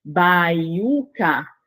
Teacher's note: Eu tenho tanto o E e o I que ficam juntos. E ali nós temos um ditongo.